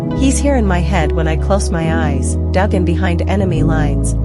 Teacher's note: assonance of the long I sound that feels a bit like rhyme in lines 25 and 26.